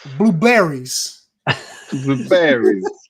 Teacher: The second syllable, always he hits it real hard on that second syllable every time